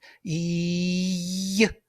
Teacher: I press tongue to the palate so much that it becomes like a consonant. Y. It becomes y sound.